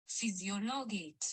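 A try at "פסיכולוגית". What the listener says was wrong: It's not physiology, it's physicology, it's psychology. It's almost like psi.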